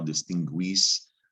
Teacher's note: gu is making a gw sound